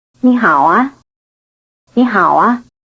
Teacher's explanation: the added syllable 啊， could carry a rising intonation to signal a question